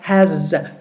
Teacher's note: we have a word like has h a s but it sounds like has with a zed